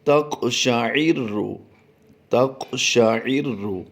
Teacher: قاف پر ہم نے قلقلہ بھی کرنا ہے، اور عین را زیر عر، را کو پر پڑھ دیں گے